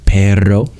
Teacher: you aspirate as much as you can, and you let that high airflow make it a bit of a trill. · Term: crispy R